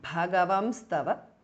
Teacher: The N is removed and there is an Anuswara which comes, and also there is a S which comes in between the two words. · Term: Sandhi